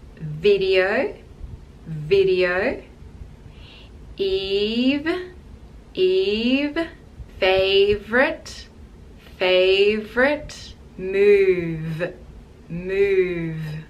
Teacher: you'll feel the vibration between the teeth and your lip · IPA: /v/